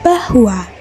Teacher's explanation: semivokal ini terjadi bila artikulator aktif bibir bawah dan artikulator pasif bibir atas. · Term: semivokal bilabial